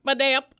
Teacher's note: the phonetic emphasis is on the middle syllable